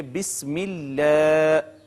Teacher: اگر اسم جلالت کا ماقبل مکسور ہو، ایسی صورت میں ہم اس کو مرقق یعنی باریک کر کے پڑھیں گے۔